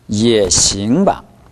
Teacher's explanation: 싱 할 때는 모음 I가 가장 길고 NG 발음이 반드시 나줘야 됩니다.